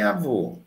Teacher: mas em avô o é fechado